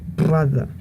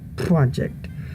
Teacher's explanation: when a P or a B is followed by an R, it becomes a bilabial trill. So a word like brother would become brother.